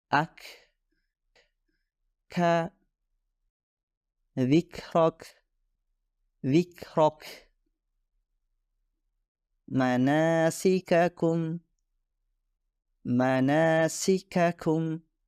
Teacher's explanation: ketika huruf Kaf dihasilkan ada sedikit semburan udara atau nafas yang keluar setelahnya